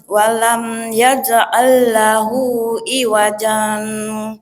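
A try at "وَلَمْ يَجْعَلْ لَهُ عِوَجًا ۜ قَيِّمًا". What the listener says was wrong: jangan iwajan nggih. Iwaja qayyima. Tapi ada jeda berhentinya. Tapi tidak bernafas ya. Iwaja ke qayyima tidak bernafas. Suara berhenti, nafas tidak.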